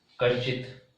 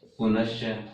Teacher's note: कह के बाद विसर्ग च वर्ण, च वर्ण च वर्ग का पहला वर्ण च वर्ण है, तो विसर्ग के स्थान पर हमने दंते स किया और च वर्ण होने के कारण ये स तालव्य स बन जाएगा और संधि होगी कश्चित।